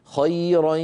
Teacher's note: خيرا، لابد من صوتين، ياء من الفم، غنة من الخيشوم.